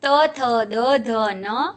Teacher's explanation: दंत्य वर्ण, जिसका उच्चारण दांत और जीभ के स्पर्श से होता है, ऐसे वर्ग है त वर्ग, त थ द ध न तथा ल और स।